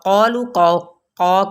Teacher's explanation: یہاں پہ واؤ مدہ کا قاعدہ ہو رہا ہے، اسی طرح قاف کی پیش کو پر پڑھیں گے لیکن بڑھائیں گے نہیں اس کی مقدار کو